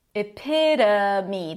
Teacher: The O is actually a schwa.